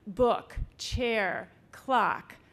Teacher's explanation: each word had a falling tone like book chair clock